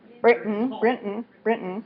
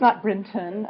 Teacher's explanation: non linguistic terms we might say it's kind of getting swallowed we could say it's a glottal stop